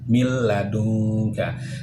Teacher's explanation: Setiap kali nun sukun bertemu dengan huruf lam, bunyi nun sukunnya kita masukkan ke dalam lam tanpa disertai dengan dengung. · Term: idgham bila gunnah